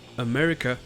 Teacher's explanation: Là c'est la deuxième syllabe qui est accentuée. Donc le reste n'est pas accentué donnant le son uh pour les deux a